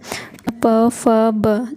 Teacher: जब भी आप बोलोगे ना प तो दोनों ओठ आपस में टच होंगे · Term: ओष्ठ